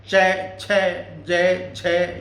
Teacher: तालवे के जीभ लग के बोलेंगे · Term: तालव्य